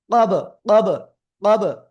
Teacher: কলকলার অক্ষর বা, এই যে সাকিন অবস্থায় আছে, তাই ধাক্কা দিয়ে পড়বো